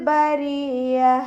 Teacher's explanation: യാക്ക് ശബ്ദ വന്നു അപ്പോ രണ്ട് ഹർഫുകൾ ഉച്ചരിക്കുന്ന കനം കൊടുക്കുക · ബരിയ ലാമിന് ഹഫ് സുക്കൂന് കൊടുക്കുക കൽക്കലയുടെ ലെറ്റർ അപ് ഹഫ് സുക്കൂന് കൊടുക്കുക റ കസ്റ ആയതുകൊണ്ട് നമ്മൾ താഴ്ത്തി ഉച്ചരിക്കും